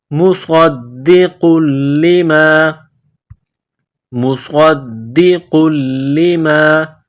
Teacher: صاد کو موٹا کرنا ہے، صاد میں سیٹی کی آواز پیدا کرنی ہے